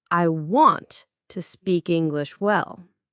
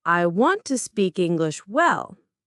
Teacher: In English, we stress certain words to show meaning. For example, I want to speak English well. The stress is on want and well.